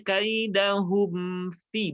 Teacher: Padahal dia idhar. Idhar itu jelas. Hum, maka pastikan rapat dulu bibirnya.